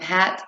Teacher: The h sound is a voiceless glide sound. The sound for h is h, as in the beginning of hat and hand. · The h sound is produced by the throat. This is a glottal sound.